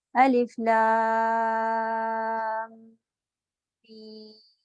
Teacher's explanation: मीम मुशद्दद हो जाएगा और शद्दा का वक्त दे देंगे, गुन्ना का भी वक्त देंगे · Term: इदगाम